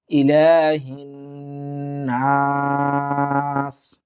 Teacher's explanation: এই যে হিন, এখানে ওয়াজিব গুন্না, সুতরাং আমরা এই গুন্নাতে আমরা এক আলিফ পরিমাণ টানবো